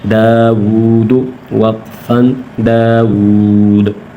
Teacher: الف کھینچیں گے، داو، دال پیش دو، داود وقفن داود، داود، آخر میں جھٹکا دیں گے، قلقلہ کریں گے